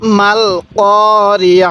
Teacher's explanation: ওয়াকফের সময় এই গোল তাটিকে হা বানিয়ে দিব